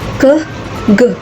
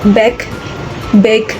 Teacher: Ke is voiceless, while ge is voiced. They are both velar plosives produced at the back of the tongue near the soft palate.